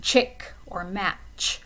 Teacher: It's a sound that kind of bursts out of your mouth and it's not extended like sh or zh